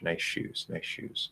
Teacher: you can drop the s it becomes an sh nice shoes nice shoes we might lengthen it a little bit · If you're saying nice shoes, you don't have to say the S, right? Basically you can drop the S. It becomes an SH.